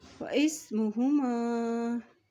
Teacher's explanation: हमज़ा के ऊपर मद है तो इसको लंबा अदा करते हुए पढ़ेंगे